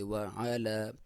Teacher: واو کو ہونٹ گول کر کے پڑھیں گے